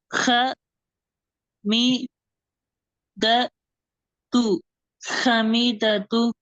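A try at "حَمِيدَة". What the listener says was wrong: ஹ அல்ல, ஹா. ஹா மீ.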